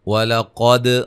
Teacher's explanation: قاف کو موٹا، دال پہ قلقلہ، اور را کو موٹا